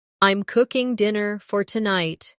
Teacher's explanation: The stress is on cooking and tonight.